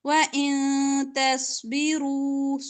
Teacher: صاد کو موٹا پڑھیں گے ، را پر پیش ہے، را کو بھی